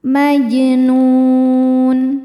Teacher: Ada hukum qalqalah sugra karena jim sukunnya sukun asli dan ada di tengah bacaan. Cara bacanya dipantulkan dengan pantulan yang kecil.